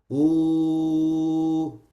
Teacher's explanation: And in the waw, there are two things that's happening. The furthest point of the tongue rises, and also you do a circling on the lips, which is a feature for harful waw. So you have to say ooh.